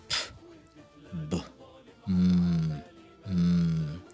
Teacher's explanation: The place of constriction of airflow for these sounds is lips. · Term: bilabial